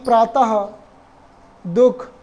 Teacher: विसर्ग का उच्चारण कंठ से होता है